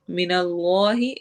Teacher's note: इसमें जलाला के लाम को हम मोटा करेंगे